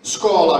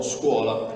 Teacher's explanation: la O si è aperta nel dittongo uo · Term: dittongamento spontaneo